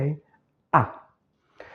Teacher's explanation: Bassa, la langue est tout en bas. Centrale, la langue n'est ni en avant ni en arrière, elle est en position neutre.